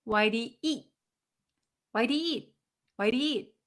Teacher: pronounce it t but we just hold it okay why e you don't hear the eat you don't hear that t sound